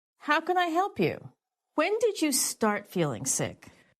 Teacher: When she asked a question that began with when or how, her intonation was falling